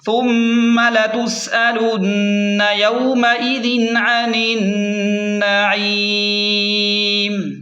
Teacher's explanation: وقف کی صورت میں میم کو ساکن کریں گے اور مد عارض بھی کریں گے